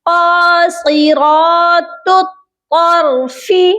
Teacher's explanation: تا کو طا کے ساتھ ملائیں گے، یعنی نقطوں والی تا کو موٹے طا کے ساتھ ملا کر پڑھیں گے، اور یہاں پر مخرج کا خیال رکھنا ہے۔ نقطوں والی تا کو باریک پڑھا جائے گا اور دوسری طا کو ہم موٹا پڑھیں گے